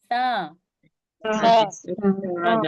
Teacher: जबान की नोक और ऊपर के सामने के दो दांतों के किनारे से अदा होता है सा